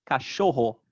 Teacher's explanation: pen ultimate means next to last ultimate would be last so in the word for dog cashoho the stress is on the second to last syllable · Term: penultimate stress